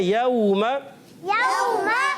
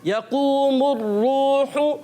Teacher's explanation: اگلے کلمے میں دیکھیں تو پیارے بچوں یہ واو مدہ ہے اور یہ واو لین ہے. واو لین کو بغیر کھینچے نرمی سے ادا کرتے ہیں اور واو مدہ کو ایک الف یعنی 2 حرکات کی مقدار کھینچ کر ادا کرتے ہیں. تو پیارے بچوں اس کو بغیر کھینچے پڑھیں گے.